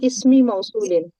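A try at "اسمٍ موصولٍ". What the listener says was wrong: इसमी के नीचे जेर नहीं लगानी। इसमी। बिस्मी नहीं पढ़ते। बिस्मी पढ़ते हैं ना, बी इसमी तो नहीं पढ़ते ना। बिस्मी पढ़ते हैं, इसम का हमजा और इब्न का हमजा नहीं पढ़ा जाता।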